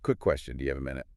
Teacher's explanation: Give it that little lift at the end.